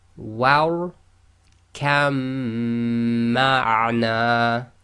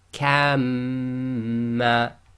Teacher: So we ignore the ba, join the kaf directly to the mim. So kamma. The next set we have the lam followed by a ra.